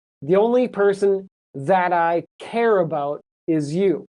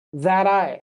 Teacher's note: Say it like it's one word and the t turns into a d sound. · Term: blends together